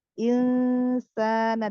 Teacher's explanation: Inna, lalu ada lam ta'rif qamariyah, lamnya dibaca jelas, izhar qamari hukumnya. Lalu ada nun sukun bertemu sin, ikhfa hakiki, tingkatan gunahnya masuk kamilah. Lalu tingkatan ikfanya dia yang sin ausat ya, pertengahan ya.